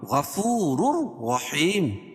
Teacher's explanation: لیکن یہاں تیسرا قاعدہ یہ ہوگا کہ تنوین کے بعد ادغام بلا غنہ کے 2 حرفوں میں سے را آ جائے گی تو یہاں ادغام تام بھی ہوگا · را کے اوپر 2 پیش کی تنوین ہے اور دوسری را بھی پر پڑھی جائے گی، کیوں؟ رائے مشددہ کے اوپر زبر ہے